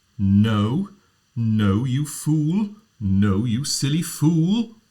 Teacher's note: an L is a pitched consonant, so you can pitch on it. It's a voiced consonant.